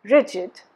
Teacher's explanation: look at these words rigid stresses on the first syllable